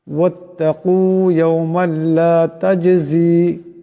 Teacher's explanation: জিম সাকিন, জিম কলকলা হরফ, আওয়াজটিতে একটি কলকলা হবে